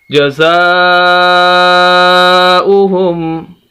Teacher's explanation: زا کے آگے الف اور اس کے اوپر مد، اور یہ سب سے بڑی مد، اس وجہ سے ہم زا کو لمبا کریں گے